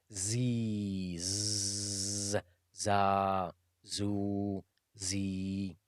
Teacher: Za is pronounced just between the two incisors. When you put the tip of the tongue between the two incisors and slightly close to the lower incisor.